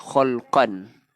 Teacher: Khalqan, tanwin bertemu, hamzah, izhar, halqi. Jelas tanpa dengung.